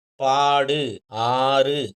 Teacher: நெடில் எழுத்து தனி எழுத்தா வந்து, அதன் பிறகு இந்த வல்லின உகரங்கள் வந்தா, அது வந்து அரை மாத்திரை அளவு குறைந்து ஒலிக்கும் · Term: நெடில் தொடர் குற்றியல் உகரம்